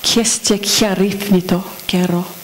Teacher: the last epsilon of esteke turns into a y sound before the following a